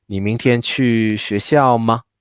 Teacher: So here we put the stress on the verb, and then the ma also has an intonation rising. 你明天去学校吗？ We make the 学校 lower in order to highlight the ma and make it a yes or no question.